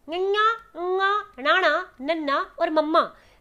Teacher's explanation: ਜਦੋਂ ਆਪਾਂ ਇਹਨਾਂ ਨੂੰ ਬੋਲਿਆ ਤੇ ਆਪਣੇ ਨੱਕ ਦੇ ਵਿੱਚੋਂ ਆਵਾਜ਼ ਨਿਕਲ ਰਹੀ ਹੈ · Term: ਨਾਸਕੀ ਅੱਖਰ